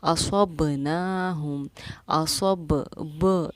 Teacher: اس با کو کی آواز کا لوٹنا، دونوں ہونٹوں کا مل کر جدا ہونا، یہ ہمارا مخرج کا ٹکر کھا کر الگ ہونا بھی کہلاتا ہے۔ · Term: قلقلہ